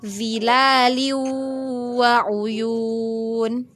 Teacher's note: Zilaliu ya, ingat itu hukumnya apa? Zilalin ketemu dengan waw itu hukumnya idgham bigunnah ya. Jadi langsung masuk.